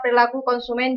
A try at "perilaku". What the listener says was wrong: Perilaku ada E-nya. Orang Jawa.